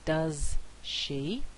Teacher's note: And so what happens is this has an effect on the preceding fricative sound. So instead of this fricative being produced as alveolar, it's now produced as post-alveolar. So we have a post-alveolar assimilation.